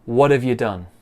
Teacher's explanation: So you becomes ya and done stays the same.